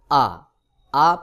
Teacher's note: আ প্রথম চলে আসে এই আ হলক অর্থাৎ গলা বা কণ্ঠনালী এই কণ্ঠনালীর শুরু থেকে আ উচ্চারণ হয়